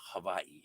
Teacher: where there's the WAI, that is pronounced with the V sound for the W.